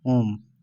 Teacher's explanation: ओम में बहुत ही ज्यादा तीन मात्रा का समय लगता है। ओम में तीन बनाते हैं ना इस प्रकार से ओम। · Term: प्लुत